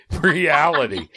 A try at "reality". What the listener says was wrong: There was a whole extra syllable and a half.